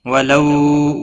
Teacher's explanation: واو لین ہے، تھوڑا نرمی کے ساتھ کھینچ کر